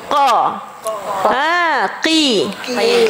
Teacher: Belakang lidah ni pangkal ni sentuh dekat langit lembut